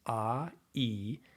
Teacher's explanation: It's two vowel sounds, ah, e, which blend together to make one sound. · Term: diphthong